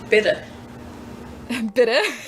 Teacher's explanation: the soft D that just sounds very North German to my ears